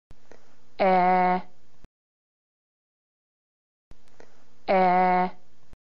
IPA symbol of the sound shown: e